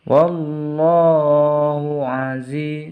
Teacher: zinya dibaca panjang karena ada harokat kasroh bertemu dengan huruf ya sukun